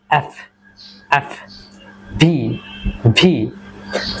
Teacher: আমরা যখন এফ and ভি এই দুইটা উচ্চারণ করব তখন আমাদের উপরের যে টিথ রয়েছে এটা নিচের ঠোঁটের সঙ্গে টাচ করবে। আমরা যদি উপরের দাঁতের সঙ্গে নিচের এই যে লিপ রয়েছে এটাকে যদি সঠিকভাবে টাচ না করাতে পারি তাহলে কিন্তু এই দুইটা লেটার্সের রাইট প্রনাউন্সিয়েশন ভুল হবে।